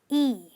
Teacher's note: This is a long sound which means that your lips are spread when you are saying it as if you are smiling